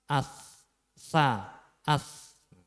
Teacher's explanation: Tapi kalau ketika sukun ini ujung lidah itu belum pas di ujung gigi seri pertama atas niku, berarti untuk makhrajnya berarti belum pas. Untuk makhrajnya sa yaitu di ujung lidah, di ujung dua gigi seri pertama atas.